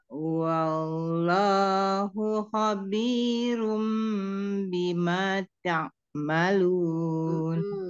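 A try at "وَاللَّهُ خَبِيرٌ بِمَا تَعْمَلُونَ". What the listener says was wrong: Wow-nya jangan diseret, Bunda. Jangan jadi kayak panjang. Jangan wah, jangan wah, sempurnakan wah. Wah, monyongkan dulu, majukan bibirnya, tapi dia tipis. Wallah, wallah.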